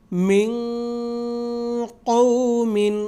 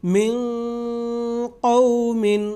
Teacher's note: تو نون جو ہے وہ مکمل ادا نہیں ہوا بلکہ اس کا اخفا ہوا ہے